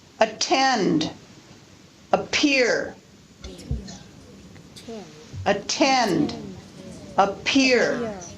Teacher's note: p, t, k are aspirated when they occur at the beginning of a stressed syllable.